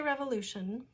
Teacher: When I say revolution, I am not stressing the syllable with the O.